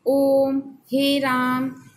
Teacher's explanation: और इसके बाद आता है प्लुत स्वर, जिन स्वरों के उच्चारण में हस्व स्वर से तिगुना समय लगे, मतलब कि 3 गुना समय, वे प्लुत स्वर कहलाते हैं।